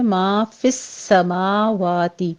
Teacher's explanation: ما کی آواز ناک میں نہیں جانی چاہیے، سین کے اوپر تشدید ہے، سختی کیجئے۔